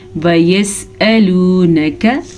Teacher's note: लाम पेश वाव लू ये लंबा होगा वाव मद्दा की वजह से।